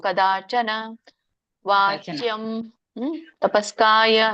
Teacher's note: ಕದಾಚನ ಇಲ್ಲ, ಒಂದುಗಳಿಗೆ ಎರಡುಗಳಿಗೆ ಅಂತ ಇರುತ್ತೆ ಯಾವಾಗ್ಲೂ ಉಚ್ಚಾರಣೆ ಮಾಡುವಾಗ. ಕದಾ ದಾ ಎರಡುಗಳಿಗೆ ಎಳಿಬೇಕು. ಇಲ್ಲಿ ನ ಹ್ರಸ್ವ ಇರೋದ್ರಿಂದ ಒಂದೇ ಗಳಿಗೆ ಎಳಿಬೇಕು. ಕದಾಚನ ವಾಚ್ಯಂ ತಪಸ್ಕಾಯ.